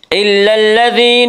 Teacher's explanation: إلا الذين، یا مدہ وہ یا جو ساکن ہو اور اس سے پہلے زیر ہو، یا مدہ کو 1 الف کے برابر کھینچ کر پڑھیں گے